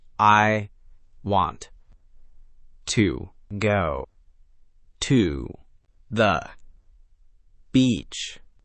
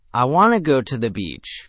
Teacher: Notice how want to compresses into a quick wanna to the, shrinks into a fast ta the, and the real emphasis lands on go and beach. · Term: stress-timed version